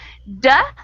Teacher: that d sound cannot continue it's an explosive sound and you can't sustain it